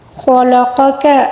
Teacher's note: خا کو پر پڑھیں گے، قاف کو بھی پر پڑھیں گے